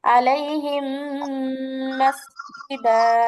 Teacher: মিম সাকিনের পরে যদি মিম আসে তাহলে পরের মিমকে তাসদীদ দিয়ে গুণনা সহ করতে হয়। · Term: মিম সাকিনের ঈদগাম